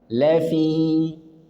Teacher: lafi mad thobi'i hanya dua harakat